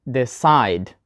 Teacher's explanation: So we put the stress on the second syllable.